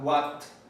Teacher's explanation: nosotros pronunciamos fuertemente la T, pero porque lo vemos ortográficamente, realmente no es una T, es una oclusiva glotal. Es cercano, no tanto porque se pronuncie en los alveolos o sea dental, sino que está ocurriendo la misma función en la glotis y es ahí donde se pronuncia exactamente este sonido.